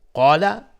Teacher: قاف از حروف استعلاء غلیظ طرف میشه، الف هم تابع قاف غلیظ